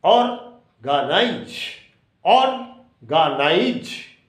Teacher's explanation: So, the accent has been given on the first syllable, organize.